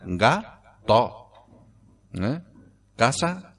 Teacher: nos comemos la S y abrimos la O final